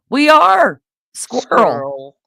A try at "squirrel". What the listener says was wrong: Squirrel. I can't hear the L.